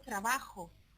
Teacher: La velar fricativa sorda es lo que pronunciamos cuando decimos trabajo